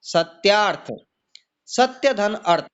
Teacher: प्रथम पद का अंतिम वर्ण छोटा अ और अंतिम पद का पहला वर्ण भी छोटा, दोनों मिलकर के बड़ा हो गया दीर्घ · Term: दीर्घ संधि